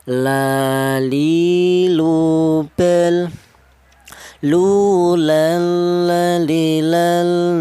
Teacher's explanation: kedua ujung lidah menyentuh langit-langit mulut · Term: huruf lam